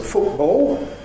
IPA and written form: ˈfʊʔbɔo (football)